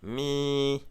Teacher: La syllabe se termine par une voyelle longue, donc elle est vivante. La consonne initiale est basse, le ton est donc plat